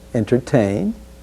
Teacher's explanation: let's be sure to include the first t sound in entertain